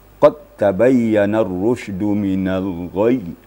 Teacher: dalam bacaan qad tabayyana, dal itu tidak ada kedengaran dalam bacaan, tapi dalam tulisan tetap ya. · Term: idgham mutaqaribain